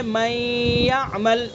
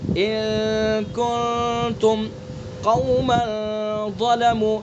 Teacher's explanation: ان کنتم، ادغام بالغنہ کی آواز تو یہ ہے من یعمل، ناک سے نکل رہی ہے من یعمل، لیکن اخفا کو ہمیں ان ایسے نہیں نکالیں گے ناک سے، بلکہ ناک کی نرم ہڈی سے